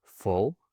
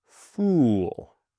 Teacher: the short sound is stopped almost. Uh, and the long sound is stretched.